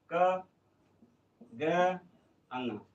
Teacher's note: अल्प प्रण मतलब कम स्वास